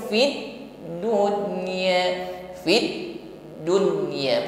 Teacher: huruf Dal tetap ngalir tidak boleh tertahan juga tidak boleh dipantulkan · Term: rakhawah